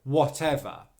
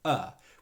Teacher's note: the final syllable is just the schwa sound er which means it should be very quiet very short very relaxed however because of the v sound what might happen and this